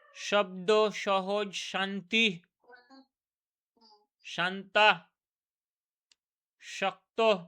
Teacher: ঘর্ষণ সহযোগে উচ্চারিত হয় এবং শীষ দেওয়ার মতো করে উচ্চারিত হচ্ছে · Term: উষ্ম ব্যঞ্জন ধ্বনি